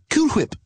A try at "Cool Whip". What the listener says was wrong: Cool Whip. You're saying it weird. Why are you putting so much emphasis on the H? Say whip. Now say Cool Whip.